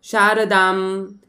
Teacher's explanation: या ठिकाणी एक लक्षात ठेवा की ज्या ठिकाणी आपण अनुस्वार देतो त्या ठिकाणी आपण अर्ध्या म सारखा उच्चार करतो. उदाहरणार्थ या ठिकाणी शारदा आणि वर अनुस्वार, मग शारदाम, जे की आपण मागच्या व्हिडिओमध्ये शिकवलेलं आहे.